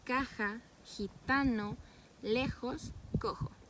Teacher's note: el post dorso se acerca al velo del paladar y las cuerdas no vibran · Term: velar sordo